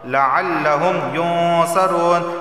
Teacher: نون ساکن کے بعد صاد آیا ہے تو اخفا والا غنہ ہوگا، یعنی زبان کے نوک اوپر کے تعلق سے نہیں لگے گی۔